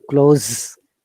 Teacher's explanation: if it is a z sound like close then it becomes verb